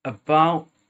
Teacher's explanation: drop the tea but make sure you're tightening that glottal part of your throat